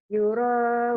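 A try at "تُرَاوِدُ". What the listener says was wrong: Tuh. Betul, bukan you. Tuh.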